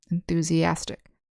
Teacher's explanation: the accent is on the second to last syllable